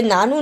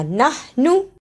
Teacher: ہا کی آواز بھی آنی چاہیے اور نون کو جلدی بھی پڑھنا